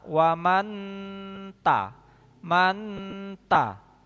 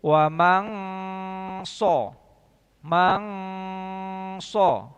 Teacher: man dia masih nempel ketika mengucapkan nun mati, masih nempel ke ta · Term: ikhfa akrob